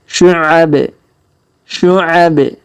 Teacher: Huruf bin di ujung. Karena kita berhenti di sini, maka kita qalqalahkan ya. Huruf binnya kita qalqalahkan.